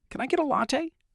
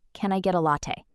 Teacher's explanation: If you say, "Can I get a latte?" with a friendly rising tone at the end, like a genuine warm question, it sounds completely natural